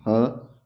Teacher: ह, स्वर तंत्रियों से आवाज आ रही। सब ये अघोष है, महाप्राण है, हवा ज्यादा लेंगे।